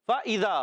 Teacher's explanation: فا کا مخرج ہے اوپر والے دانتوں کے کنارے، جب نیچے والے ہونٹ کے تر حصے سے لگتے ہیں تو ادا ہوتا ہے فا